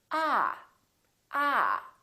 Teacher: your tongue touch your bottom teeth like this ah ah and this vowel is usually longer than most people who are non-native speakers tend to make it